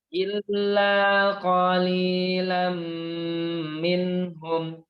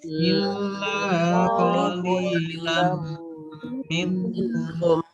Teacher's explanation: Karena dia idgham bi gunnah, maka kita bacanya lebih lama tempo penekanannya.